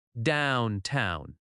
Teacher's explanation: Downtown has stress on down downtown.